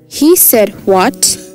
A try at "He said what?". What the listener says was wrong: No, এখানে একটা ব্যাপার তোমার একটু আরেকটু চেঞ্জ করতে হবে এই what এ জোর দিতে হবে এটা মেজাজ খারাপ এই জন্য বলি হ্যাঁ ধরো তোমার আম্মু তুমি একজনের সাথে মিশতে না করেছে তুমি তারপরে মিশছো সে বলে আম্মু আমি তো ওই অমুকের সাথে মিশছি তুমি বলো